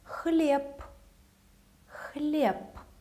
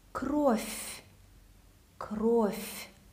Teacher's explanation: when a word finishes with the voiced consonant, it automatically becomes unvoiced, voiceless. For example, for the pair b, p, b will turn into p.